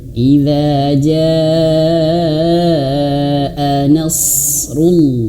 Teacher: huruf ro di sini harus tebal. Kenapa tebal? Karena huruf ra ini berharakat dommah